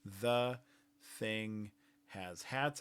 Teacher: The has voicing and th does not. Again, you can also tell that the voiced consonant is a little quieter than the unvoiced consonant. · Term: voicing bar